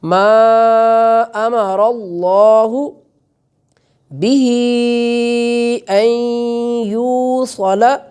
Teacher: میم کے اوپر مد ہونے کی وجہ سے کھینچ کر ادا کیا جائے گا